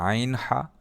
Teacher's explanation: হলকের মধ্যখান থেকে আইন হা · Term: হরফে হালকি